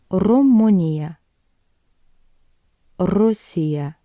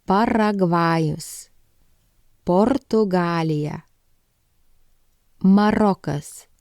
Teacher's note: it's a trilled or tapped sound which can be challenging for some